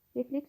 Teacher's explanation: Refleks sözündə isə vurğu sondadır.